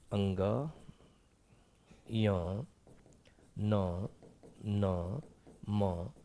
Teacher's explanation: इसका उच्चारण नासिका से होता है, नासिका मतलब नाक से होता है, याद रखिएगा। ये पंचमाक्षर जो है वह नाक से होता है और एक अनुस्वार का भी उच्चारण नाक से होता है